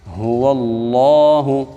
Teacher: ہا کو خوب موٹا پڑھیں گے اور اس کو واضح کریں گے۔ جب لفظ اللہ سے پہلے والے لفظ کے اوپر زبر آ جائے تو لفظ اللہ کو موٹا پڑھا جاتا ہے، اور جب کسی لفظ کے اوپر کھڑا زبر آ جائے اس کو ایک الف کے برابر لمبا کیا جاتا ہے۔